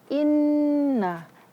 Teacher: Nun bertasydid itu harus gunnah.